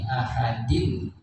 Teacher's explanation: jadi ahadin bacanya harus jelas nunnya kedengaran dan tidak boleh ditahan lama-lama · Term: izhar